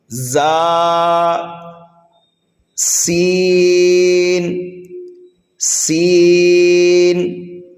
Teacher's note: اس کو سختی کے ساتھ پڑھنا ہے اور سینٹی کی طرح آواز نکالنا ہے، کیونکہ یہ حروف صفیریہ میں سے ہیں۔